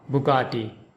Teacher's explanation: In Bugatti, the emphasis is on the second syllable ga, Bugatti, and in chen-toh-dee-EH-chee, the emphasis is on the fourth syllable a, chen-toh-dee-EH-chee, Bugatti Centodieci.